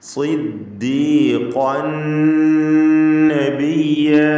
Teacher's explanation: ഖാഫിന് പൂർണ്ണമായ തഫ്ഖീം, ഖാഫിൻ്റെ തൻവീനിന് ശേഷമുള്ള നൂനിൽ പൂർണ്ണമായും ലയിപ്പിച്ച് മണിക്കണം. ഇദ്ഗാം കാമിൽ ബിഗുന്ന.